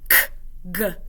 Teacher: those are made in the back of the mouth and are at the velar place.